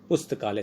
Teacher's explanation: इसमें पुस्तक शब्द में जो क में ए आ रहा है और आलय शब्द में आ रहा है, तो अ और आ मिलकर आ हो गया